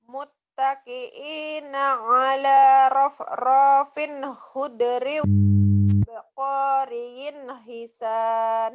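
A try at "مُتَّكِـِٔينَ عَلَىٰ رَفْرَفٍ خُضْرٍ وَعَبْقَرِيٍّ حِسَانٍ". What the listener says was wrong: Nah, panjang pendeknya nih. Rafrafin. Ro-nya pendek semuanya. Rafrafin khudriu. Do-nya nggak boleh jadi khudriu. Khudriu.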